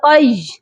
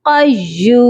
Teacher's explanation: یا مشدد ہے، تو یا کو ہم نے سختی سے پڑھنا ہے۔ یہاں پر بھی اس ورڈ میں یہی ہماری مسٹیک ہوتی ہے کہ ہم یا کو لین بنا کر پڑھ دیتے ہیں، دونوں یا کو، دونوں یا مشدد ہیں، اس کو سختی سے پڑھیے گا۔